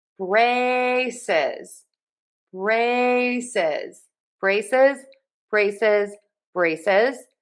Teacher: And don't forget the Z in syllable number two, braces.